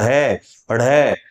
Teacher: हमारी जिह्वा हमारी मूर्धा को स्पर्श करके चलती है और फिर झटके से नीचे गिरती है, तो हमारे नीचे के दांतों को भी स्पर्श करती है। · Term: उत्क्षिप्त व्यंजन